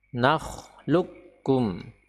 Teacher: huruf qaf ya tidak perlu dimunculkan sama sekali karena dia diidghamkan atau dileburkan dimasukkan ke dalam huruf Kaf secara sempurna